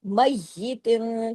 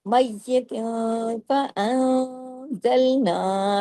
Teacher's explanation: ता दो से तिन की तनवीन के बाद फा आ गया, तो ये इख्फा होगा, इख्फा के साथ गुन्ना कामिला